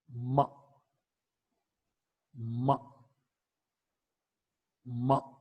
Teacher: Okay, the air that comes from the lungs is stopped in the mouth cavity but not released through the mouth cavity. When you release the closure of the lips, the air is released from the nasal cavity. · m is a voiced bilabial nasal consonant sound. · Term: nasal sound